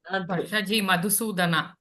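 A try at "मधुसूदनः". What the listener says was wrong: Madhusudanaha. Visarga is there.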